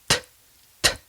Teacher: the very tip of your tongue needs to rest between your top and bottom teeth for the beginning of the sound, and then it just pulls away a little bit as the air comes out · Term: letter T